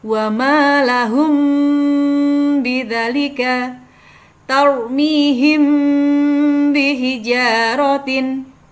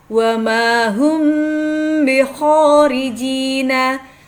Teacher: menyamarkan suara antara mim dan ba dengan disertai suara dengungan yang kemudian ditahan sekitar dua ketukan ketika mengucapkan ya kedua bibir rapat sempurna sehingga tidak ada udara